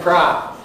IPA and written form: prɑː (pro)